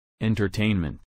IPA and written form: en.t̬ɚˈteɪn.mənt (entertainment)